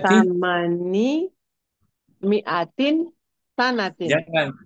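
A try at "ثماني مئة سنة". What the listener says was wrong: Jangan ditanwin. Mudhafun ilaih dia. Samani. Mi'ati.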